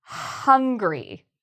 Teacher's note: Now, for the word hungry, you really need that sound, that H sound. So there should be a lot of air at the beginning of this word. Hungry. So the main thing here, remember to pronounce the H.